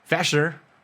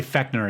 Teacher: Where I lived in Lahnstuhl outside of Kaiserslautern, they have a little bit of a lazy accent, and those hard CHs become sh sounds